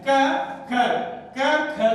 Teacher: क अल्पप्राण है और क का ही महाप्राण है ख